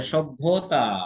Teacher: এখানে ভ আছে মহাপ্রাণ ধ্বনি, সুতরাং ভ কে আমরা দ্বিত্ব করতে পারবো না। দুইটা মহাপ্রাণ ধ্বনি একসাথে পরপর হয় না। কিন্তু যেহেতু ভ মহাপ্রাণ, সেহেতু প্রথমটা তার অল্প প্রাণ হবে